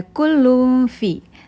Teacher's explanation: tanwin bertemu dengan huruf Fa hukum bacaannya adalah ikhfa dan cara membacanya adalah samar-samar